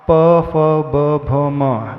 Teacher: प फ ब भ म अक्षर के उच्चारण में आपके दोनों होठों का प्रयोग होगा इसमें दांतों का प्रयोग नहीं होता है